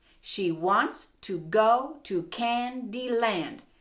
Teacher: Hey, that's iambic tetrameter and it flows perfectly.